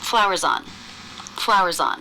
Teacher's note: if the ending weak voiced consonant links into a vowel it's not really that weak anymore